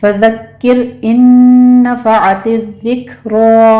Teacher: फज़क्किर इन नफ़अतिज़्ज़िक्रा। फज़क्किर में काफ के ऊपर तशदीद है, सख्ती कीजिए और आगे रॉ बारीक पढ़ी जाएगी